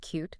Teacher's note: you can feel the y sound right at the front of the palate